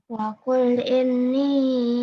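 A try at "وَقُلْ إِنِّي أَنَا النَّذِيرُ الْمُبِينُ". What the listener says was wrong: Kurang dengungnya.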